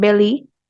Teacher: The tip of the tongue touches the alveolar ridge, but the air escapes through the sides of the tongue. That's why it's called a lateral.